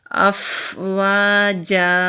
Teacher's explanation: فا ہلکی سی ہوا کے ساتھ ادا ہوتا ہے۔ واو کے اوپر زبر ہے، آگے خالی الف ہے، الف سے پہلے زبر ہے تو الف مدہ ہے، ایک الف کے برابر کھینچ کر پڑھیں گے۔